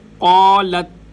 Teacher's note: قالت تا باریک، قاف موٹا، اگر قالت پڑھیں گے تو غلط ہو جائے گا۔